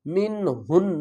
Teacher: یہاں پر اظہار کریں گے، حروف حلقی میں سے ہا آ رہا ہے